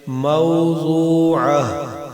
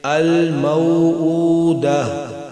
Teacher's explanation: اگر کلمے کا آخری حرف گول تا ہو، خواہ اس پر کوئی بھی حرکت یا تنوین ہو، وقف کی صورت میں گول تا کو ساکن ہا میں بدل دیں گے